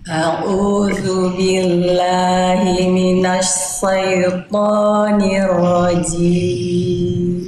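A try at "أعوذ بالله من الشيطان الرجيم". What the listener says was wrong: Sip, di huruf shin Bunda. Minasya. Tadi Bunda melafalkan minasa. Minasya. A'udzu billahi minasyaitonir rajim. Shin. Shin itu dilafalkan kalau dilatinkan tuh SYA Bunda. Sya.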